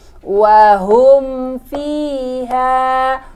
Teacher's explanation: Izhar safawi. Mim sukun bertemu dengan huruf fa, dibaca jelas tanpa dengung.